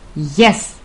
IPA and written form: jes (yes)